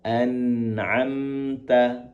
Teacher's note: pastikan ta di sini tidak terdengar hamesnya